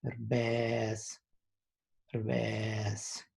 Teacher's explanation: There's a creak on the first E.